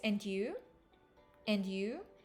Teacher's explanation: notice the rising intonation on and you